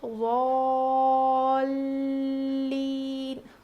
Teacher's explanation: یہاں پر لام پہ تشدید ہے تو یہاں پر ہم تھوڑا وزن روکیں گے، یعنی ضالین.